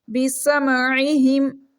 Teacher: عین ہلکی لیٹر ہے، گلے کے درمیان والے حصے سے ریڈ ہوگا۔ ہا بھی ہلکی لیٹر ہے، گلے کے آخری حصے سینے والی سائڈ سے ریڈ ہوگا۔